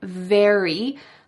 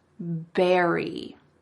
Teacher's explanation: Instead of saying very, I heard berry. He exchanged the V for the B sound.